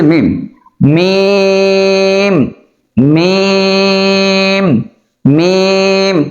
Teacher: মিমটা হচ্ছে দুই ঠোঁট লাগবে এবং 4 আলিফ পরিমাণ টান হবে